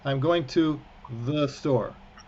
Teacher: you can clearly hear that there's a vowel between the th and the s of the store but it's so fast and it's so it's it's like a nothing no emphasis whatsoever